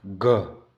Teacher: घ है ना कंठ में आवाज आ रही है